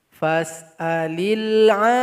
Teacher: dipanjangkan 6 harokat dulu ainnya atau 6 ketukan, baru ditasydidkan kepada huruf dal. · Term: mad lazim